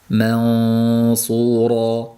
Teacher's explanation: Ya'ni sodni yo'g'on qilaman deb mansura ham deb qo'yishdan ehtiyot bo'lishlik lozim. Mansura, ma ingichka, sod yo'g'on. Ayni paytda mani ingichka qilishim kerak ekan deb og'zimiz yoyilgan holatda qolib, ixfosi ham ingichka bo'lib qolishligi kerak emas.